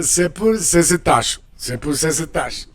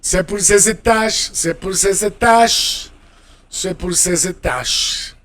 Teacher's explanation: you make the liaison with the Z because étage begins with a vowel and say ends with the S, but every time you get an S in between two vowel sounds in French, you make a Z sound, like in English.